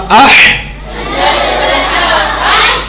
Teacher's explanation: یہ جو ہا ہوتی ہے یہ گلے سے نکلتی ہے. اس ہا کے اندر سیٹی ہوتی ہے. حمزہ زبر ہا اح, سیٹی آئی.